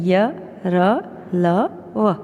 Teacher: कहीं पर भी संपूर्ण रूप से हमारी जीभ स्पर्श नहीं करती. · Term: अंतस्थ व्यंजन